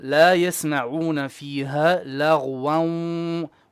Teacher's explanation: with your idgham with ghunna, you have to have a bit more of ghunna.